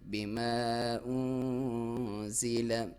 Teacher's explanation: نون ساکن، اس پہ اخفا ہے، باریک اخفا، ناک میں سے آواز لے کے جانی ہے لیکن باریک